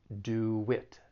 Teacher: a sound in between two other sounds so in this case we're going to add a slight w sound between do and it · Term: intrusion